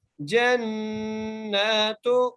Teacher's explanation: ہا کو میم سے ملائیں گے، ٹھیک ہے جی، ربہم جنات، جیم کو نون سے ملائیں گے، غنہ کریں گے نون پر